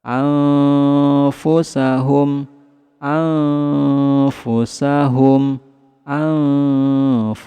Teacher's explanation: Nun sukun bertemu dengan huruf fa, maka samarkan nun sukunnya, kemudian tahan, kemudian lidah kita bersiap-siap ke huruf fa.